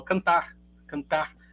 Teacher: quando eu falo R né ele sai apagado ó cantar cantar muito muito mais Brando do que um alguém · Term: Mineiro